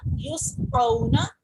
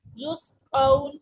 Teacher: واو ساکن سے پہلے زبر ہے تو یہ واو لین ہوگی, اس کو ہم سافٹ پڑھ رہے ہیں اور جلدی پڑھ رہے ہیں, جبکہ یہ واو ساکن سے پہلے پیش ہے تو یہ واو مدہ ہوگی.